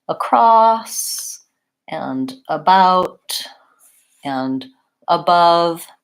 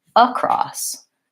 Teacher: So for all of these words, the second syllable gets stressed and the first syllable is short and reduced. So it's not a or a cross, it's across.